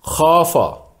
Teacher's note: خا حرف مستعلیہ ہے، موٹا پڑھنا ہوگا چونکہ یہ الف سے پہلا حرف ہے، اس لیے الف اس کے تابع ہے تو یہ بھی موٹا ہوگا اور اسے بھی پر پڑھیں گے۔